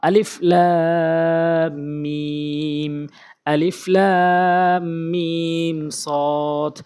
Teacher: হরফের নাম ধরে ধরে আমরা চার আলিফ করে টেনে পড়বো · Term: মধ্যে লাজিম হরফি মুসাক্কাল